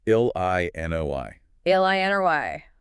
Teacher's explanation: 3 syllables, and the stress is on the final one.